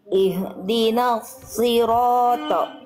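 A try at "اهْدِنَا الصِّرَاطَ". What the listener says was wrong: Oke, lagi kuatkan di shotnya lagi, ditekan karena dia bertasydid dan angkat pangkal lidahnya, dorong lidahnya ke dalam. Ihdinas sirata.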